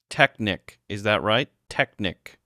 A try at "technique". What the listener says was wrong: Not quite. It's technique. The stress is on the second syllable. Try emphasizing the neek part.